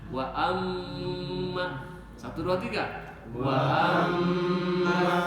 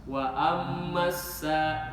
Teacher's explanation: Wa ammasa itu yang salah yang enggak ditahan dua harakat enggak dengung. Jadi setiap nun tasdid dan mim tasdid itu makhrajnya dari hidung